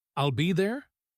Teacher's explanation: If she instead said, "I'll be there?" with the rising tone, it would suddenly sound unsure, like she was asking herself if that was even possible.